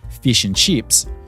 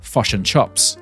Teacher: we like to completely swallow the vowels all together in the same phrase